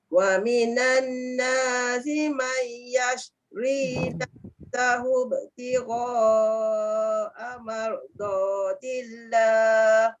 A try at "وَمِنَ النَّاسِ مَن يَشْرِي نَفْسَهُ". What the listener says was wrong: Dekat nun kan yang dengung tu. Tak cukup dengung. Mai pun ada dengung. Wa minan nasi man yashri.